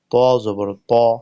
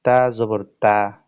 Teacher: এই যে ত এবং তা এই দুইটি হরফের মাখরাজ একই, কিন্তু দুটি হরফের মাঝে সিফত বা বৈশিষ্ট্যগত পার্থক্য রয়েছে। সেটা হলো ত উচ্চারিত হবে মোটা করে শক্ত করে ধরে, আর তা উচ্চারিত হবে পাতলা করে